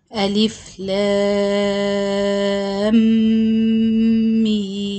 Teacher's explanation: you will read the lam six count, then you do the gunna for idgham shafawi, then another six count. So I will read it like this: alif lam meem. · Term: idgham shafawi with gunna